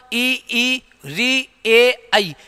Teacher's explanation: इन चारों स्वरों का जब उच्चारण करते हैं तो हमारी जीभ का आगे का भाग ज्यादा क्रियाशील रहता है है इसीलिए इसको अग्र स्वर कहते हैं बात करें मध्य तो